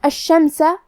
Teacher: ہمیں شین کو 2 حرف کے برابر پڑھنا ہے کیونکہ اس پہ تشدید ہے